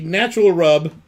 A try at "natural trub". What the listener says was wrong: There's a T there. Natural trub.